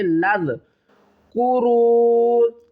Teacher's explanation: لام کو ذال کے ساتھ ملائیں گے